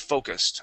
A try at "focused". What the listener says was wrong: Okay, so it is focused. Okay, give me that ED ending. Focused.